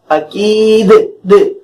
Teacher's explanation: دال حروف قلقلہ میں سے ہے، لہذا آواز کو ہم نے ہلا دیا، آواز کو ہم نے اچھال دیا۔